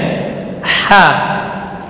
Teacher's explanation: ha huruf hamas dan rakhawah keluar dari tengah tenggorokan